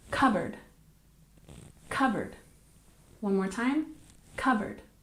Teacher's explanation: don't forget we drop the P sound and we stress the first syllable